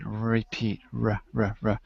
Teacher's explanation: my tongue is kind of back a little farther in fact it's kind of floating in space